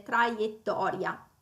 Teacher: Abbiamo poi ancora una R verso la fine della parola che bisogna arrotolare